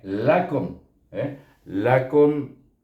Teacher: baris depan bunyinya Ku tetap dan dia tidak boleh dipanjangkan karena dia izhar syafawi